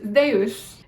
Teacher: the zeta in Greek actually is pronounced like zd, as in the word wisdom